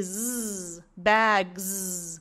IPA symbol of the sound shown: z